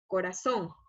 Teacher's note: La mayor fuerza de voz está en la sílaba son, es decir, que es el acento ortográfico y lleva tilde porque es una palabra aguda.